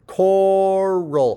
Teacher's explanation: we have a nice aspiration, PTK at the beginning of a syllable, and then or, roll. · I think the R is clearly at the beginning of the second syllable by onset greed.